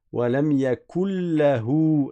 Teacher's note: On supprime le noun et on met une shadda sur le lam à l'oral.